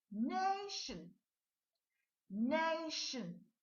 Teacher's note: look at the way i pronounce the shin we don't need the o